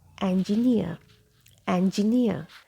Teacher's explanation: in British English we keep letter R silent